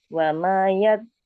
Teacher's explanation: Nah, ditahan dulu di zalnya ya. Kita tasydid.